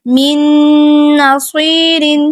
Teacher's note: صاد کو پر اور موٹا پڑھیں گے، یا مدہ ہے ساتھ میں تو 2 حرکات لمبا کریں گے